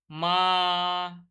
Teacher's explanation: মা, টেনে টেনে উচ্চারণ করছি, বা, টেনে টেনে উচ্চারণ করছি, এগুলো হচ্ছে প্লুত স্বরের উদাহরণ